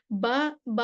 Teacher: بند ہونٹوں کے گیلے حصے سے نکلتا ہے، اور با میں جہر ہے، شدت ہے، استفعال ہے، انفتاح ہے، اطلاق، قلقلہ ہے، اور یہ متوسطہ لیٹر ہے۔